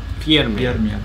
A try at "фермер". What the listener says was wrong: Фермер. Yeah, R is a little stronger here, but not to worry, we're going to work on that. Фермер.